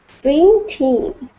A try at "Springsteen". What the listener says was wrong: Springsteen. Springsteen. So not Springsteen, but you have to get that t sound. Springsteen.